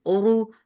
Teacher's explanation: ro is heavy for Dhamma circle lips, and the sound is short